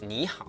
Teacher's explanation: the first one changes into the second tone, the rising tone. For example, in 你 好, which means hello, the first word is actually pronounced as 你 好.